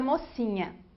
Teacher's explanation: A vogal O é articulada quando a língua vai em direção ao palato mole. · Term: vogal posterior